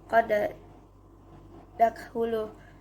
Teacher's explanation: huruf da pertama dileburkan ke huruf da kedua menjadi qad dakhulu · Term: idgham mutamatsilin